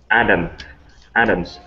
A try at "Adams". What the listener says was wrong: Good, nice job with that S at the end.